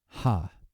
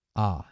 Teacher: it's a rough breathing gets a little puff of air